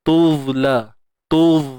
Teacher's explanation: Dha ni keluarkan hujung lidah.